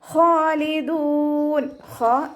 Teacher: തൊണ്ടയുടെ അവസാന ഭാഗം തൊണ്ടകുഴി എന്നൊക്കെ നമ്മൾ പറയാറില്ലേ ആ ഭാഗമാണ് ഹന്റെ മഹ്റജ്